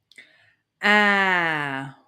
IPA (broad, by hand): æ